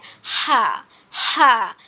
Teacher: বড় হার উচ্চারণটা হচ্ছে হা হা, গলা চেপে উচ্চারণ করতে হবে।